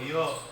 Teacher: આ બોલશો ય તો એનું ક્યાંય સ્પર્શ થતું નથી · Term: અસ્પર્શી